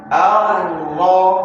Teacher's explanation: Jangan dibaca-baca a. A-nya pendek langsung nyambar huruf ro.